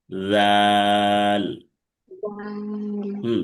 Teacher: এটা বর্গের জয়ের মতো বলা যাবে না। জাল হরফটা জিহ্বার আগা থেকে সামনে দুই দাঁতের আগার সাথে লাগবে।